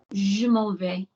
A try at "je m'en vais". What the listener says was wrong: Don't give me bigger. Why have I got bigger consonants? Give me bigger vowels. Je m'en vais. Bigger twang, bigger chest, bigger head.